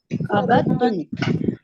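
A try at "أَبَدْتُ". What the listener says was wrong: अबत्तु, दाल की आवाज नहीं है।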